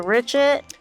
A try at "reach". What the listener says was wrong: you mean reach, not rich. Those are two different words.